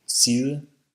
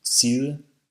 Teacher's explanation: While these words look the same on paper, the Danish pronunciation has the soft D, and the final vowel vanishes.